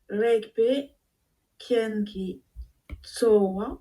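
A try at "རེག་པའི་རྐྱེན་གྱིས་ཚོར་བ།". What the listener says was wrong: Bravo.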